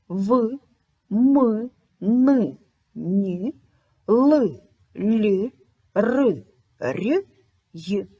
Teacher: сонорні у цих приголосних голос переважає над шумом тому вони не належать Ні до дзвінких Ні до глухих